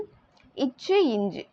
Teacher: நாவின் இடை நடு அன்னத்தின் இடைப்பகுதியை வந்து பொருந்துவதால் வந்து வருது